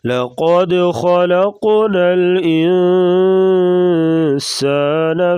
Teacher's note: انسان یہاں پر اخفا ہو رہا ہے، یعنی ناک میں آواز چھپا کر غنہ کریں گے